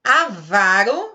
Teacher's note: Avaro, a sílaba tônica é o vá.